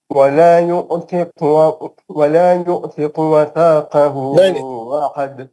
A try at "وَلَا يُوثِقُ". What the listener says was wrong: نہیں ولا یو نہیں ہو, ولا یوثقو مد اصلی ہو.